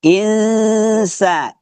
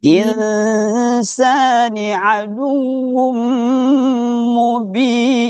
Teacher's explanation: jadi ikhfa'nya itu lari ke hidung seperti orang sengoh